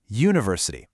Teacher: even though it starts with the vowel letter u, it actually starts with a consonant Y sound